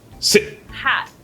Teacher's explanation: it just stops the I, hard stop, right in the middle, as opposed to letting it sort of keep going, ease along and fade · the T when it comes at the end of the word is just a stopper